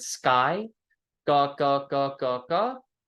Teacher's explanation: we don't have a puff of air that comes out of our mouth that would be called unaspirated